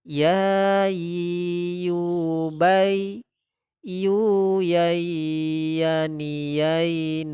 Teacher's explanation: tempat keluar hurufnya yaitu dari pertengahan lidah dengan langit-langit atas